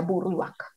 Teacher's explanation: que no existe la diferencia en la pronunciación entre las letras B y V